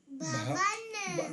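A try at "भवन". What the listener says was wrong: No, it's not ba. Bha. Bhavan. Second ba, right? Bhavan.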